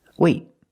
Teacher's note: release the T it's a stop T I stop the air I stop the air with my tongue in the T position